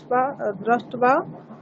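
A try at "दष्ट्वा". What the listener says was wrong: দ্রষ্ট্বা নয়, দষ্ট্বা, রেফ নেই কিন্তু, রফলা নেই।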